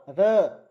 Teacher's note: जीवा की नोक लपेट खाकर ऊपर मसूड़ों को छूती है, इसलिए हम र को जो है लुंठित व्यंजन कहते हैं